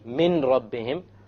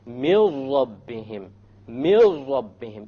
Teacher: So you don't say min rabbihim, you drop it. You drop the noon and you merge the meme with the ra. And you say, mil rabbihim, mil rabbihim, immediately. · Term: idgham